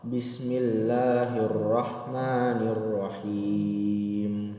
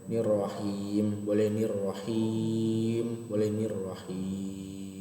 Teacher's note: Nah, mad adli sukun apabila mad tabi'i bertemu dengan huruf berharokat yang disukunkan karena waqaf. Panjangnya 2 atau 4 atau 6 harokat itu dibacanya.